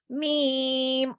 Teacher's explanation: میم کی ذاتی صفت آواز میں غنہ ہے